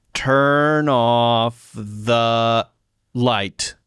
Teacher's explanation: You linked turn and off pretty smoothly there. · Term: linking